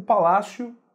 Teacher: O que a gente diz é o palácio, então você pronuncia o O como se fosse um U.